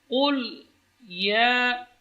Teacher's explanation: ya juga tidak boleh dibaca tebal karena ya termasuk huruf tarqiq, huruf yang tipis